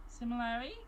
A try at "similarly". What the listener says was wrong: Yeah, but enunciate your L's. Similarly. Stronger.